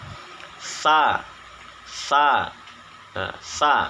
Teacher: penyebutan huruf tsa ini bedanya dengan suaranya kendor atau lunak nah dan suaranya tidak tertahan